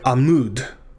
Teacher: mood because that name has a dog-ish forta in it and that accented syllable is the second one mood and since the cuboots is in that syllable it is long